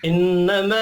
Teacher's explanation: इन्नमा, नून मुशद्दद पर गुन्ना करेंगे। अलिफ के ऊपर छोटी मद है, 3 अलिफ के बराबर खींच कर पढ़ना है।